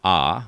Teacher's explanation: There is the sound Ah, which starts at the back of the throat